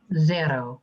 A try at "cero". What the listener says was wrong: Cero, and not Z, no buzz. Cero. Cero. Like an S. Cero. Cero.